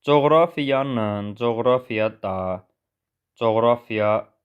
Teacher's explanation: coğrafiya sözündə vurğu ikinci hecəyə düşür və biz ona hansı şəkilçini artırırıq, yenə də alınma söz olduğuna görə vurğu öz yerində stabil qalacaq.